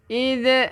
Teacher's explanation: Hati-hati jangan ada lantunan sebab dia bukan qalqalah.